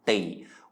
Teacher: we're using a short vowel which means we're going to be pronouncing it with a low tone